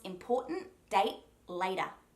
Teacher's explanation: there are no hard T sounds, and we do use that soft DT sound for later, but date actually has just a completely silent T, and important, like we just established, is that sound.